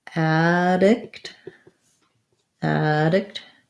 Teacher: for addict we have the stress on the add syllable so we have an a black cat vowel so it's just